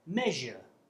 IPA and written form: ˈmeʒə (measure)